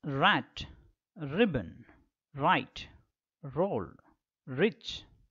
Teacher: the tip of the tongue is brought to the back portion of the teeth ridge the back portion of the teeth ridges will be caught the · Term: post alveolar position, frictionless continuant